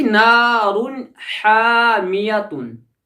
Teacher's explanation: تنوین یا اس نون ساکن کی آواز کو ظاہر کرنا ہے، اس کو جلدی ادا کرنا ہے